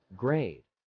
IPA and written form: ɡreɪd (grade)